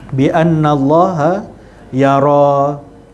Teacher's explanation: Kita tak baca dengan bi annallah, sebab kalimah Allah, sebelum kalimah Allah itu ada huruf yang berbaris di atas, dibaca dengan tebal. Bi annallaha yara.